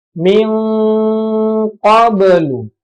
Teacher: Nun sukun bertemu dengan qaf ya. Jadi bacanya seperti bunyi ikhfa ya. Cuman bunyinya seperti ng ya.